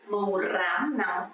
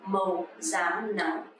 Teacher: Actually, to pronounce correctly is R, R sound, but lately nobody pronounce like that. You can actually pronounce like Z, Z sound, just like Z sound in English.